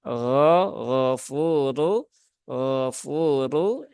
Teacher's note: karena rnya berbaris domah maka rnya dia terbaca dengan tebal yaitu dengan cara menaikkan pangkal lidah